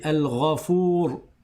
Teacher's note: Je dis alfour il est grave, il est pas léger